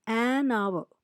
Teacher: an hour h o u r though it begins with H the H is silent you pronounce it as our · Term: silent h